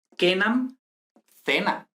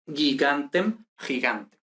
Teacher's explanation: E, I, vocales palatales. Entonces, oclusiva velar más vocal palatal se palatalizan, ¿no? Y generalmente acaban con una pronunciación fricativa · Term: palatalización